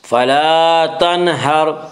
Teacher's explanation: یہاں را ساکن سے پہلے ہا کے اوپر زبر ہے، اس سے را ساکن کو پر پڑھیں گے